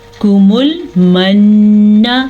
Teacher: نون کی شد پہ غنہ بنتا ہے